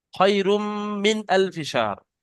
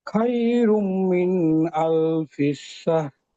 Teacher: না, হয় রুম গুণনা হবে, কিন্তু মিন এই নুনটা গুণনা হবে না, এটা এখানে ইজাহারে স্বাভাবিক এই ইজাহার আছে